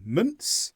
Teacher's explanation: a native speaker will probably barely say the n Sound at all